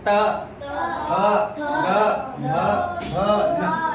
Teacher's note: जीभ हमारा ऊपर वाले दांत को टच करता है। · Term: दंत व्यंजन